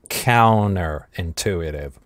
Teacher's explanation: кластер /nt/ ассимилируется